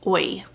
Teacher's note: their mouth kind of starts in one spot and glides to another. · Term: diphthong